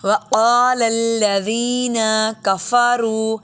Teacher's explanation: یہ پہلے والا نقطے والا قاف موٹا ہے اور دوسرا کاف باریک ہے. وقال الذین کفروا اذا بالکل لمبا نہیں کریں گے، زبر زیر آ رہی ہے اس لیے.